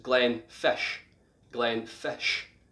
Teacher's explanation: the DDICH at the end is more of a sh sound